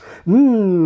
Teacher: like vowels these let the voice out more or less unimpeded in M for example the mouth may be shut but the sound gets out freely through the nose